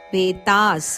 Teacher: ಆನಂತರ ಬರುವ ವಿಸರ್ಗದ ಉಚ್ಚಾರಣೆ ಪೇತಾಸ್ ಸ ಅಂತ ಬರಬೇಕು